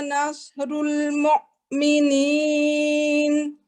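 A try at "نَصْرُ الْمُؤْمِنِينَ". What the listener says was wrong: हमजा को मुमिनीन अलिफ की तरह इसकी आवाज हो, आइन की तरह नहीं। नस्रुल मुमिनीन। इतना यानी कि स्ट्रांगली इसको झटका नहीं देना।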